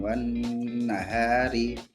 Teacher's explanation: Jadi alif lamnya tidak dibaca, langsung ke huruf selanjutnya yaitu nun, wan nahari. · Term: alif lam Syamsiyah